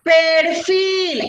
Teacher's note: Pero encontré la mayor fuerza de voz y la mayor fuerza de voz con la que se pronuncia la sílaba en la palabra perfil es Feel. Y la palabra entonces tiene la mayor fuerza de voz en la última sílaba